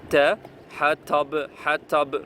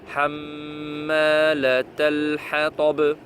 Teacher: Ta, il faut bien faire Mufakhama.